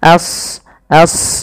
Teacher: ya a-nya tipis shadnya tebal karena Shad punya sifat huruf Istia dan idbaq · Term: Shad tebal